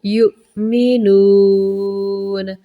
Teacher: لیکن حمزہ ہے مطلب آپ نے جھٹکے کے ساتھ پڑھنا ہے، تھوڑا سا جھٹکا۔